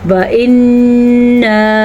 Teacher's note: ایک تو یہاں پہ الف مدہ ہے اور نون کا غنہ بھی ہے